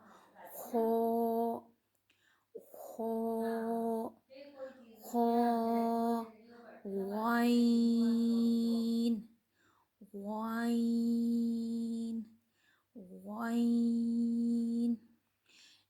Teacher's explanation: جو خا ہے اس کو موٹا بھی پڑھا جاتا ہے، اور یہ اوپر والے حصے سے ادا ہوتا ہے۔ اپنے ساؤنڈ کو اوپر والے حلق سے نکالیں گے نا تو آٹومیٹک ہمارا یہ ادا ہوگا۔